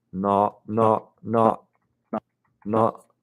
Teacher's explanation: it's more kind of like a schwa or centered or lowered sound compared to mine